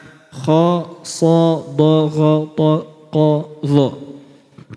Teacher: huruf-huruf yang suara dan lidah kita yang bagian belakang itu naik, sehingga disebut juga dengan huruf isti'la.